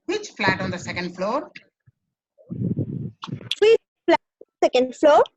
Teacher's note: Say in rising tone, it's a question.